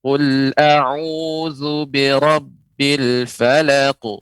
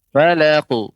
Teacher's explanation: Huruf isti'la ini huruf tebal ya, naiknya suara ke langit-langit ya, langit-langit bagian mulut kita sehingga pengucapan qalqalanya lebih tebal ya.